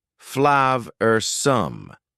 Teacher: Notice the pronunciation. Two schwa sounds there.